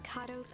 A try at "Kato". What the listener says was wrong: Kato. It's Kato. Kato. It's a short A. Kato. Kato.